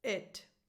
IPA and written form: 'ɪt (it)